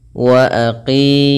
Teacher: panjangkan qinya dua harakat kemudian hati-hati jangan Terganti dengan Kaf wa aki Ah ini salah